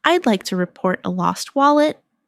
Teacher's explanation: Stress lost wallet so it's clear